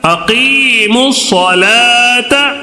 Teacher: صاد یہ شمسی حروف ہے، اس کی وجہ سے الف کو بھی چھوڑ دے رہے، لام کو بھی چھوڑ دے رہے.